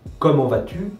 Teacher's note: Donc, en français, si on dit comment, on termine sur la dernière syllabe, mais on dit comment vas-tu, on termine sur la dernière syllabe tu, du groupe de mots